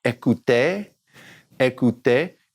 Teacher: Just remember that ER at the end sounds like eh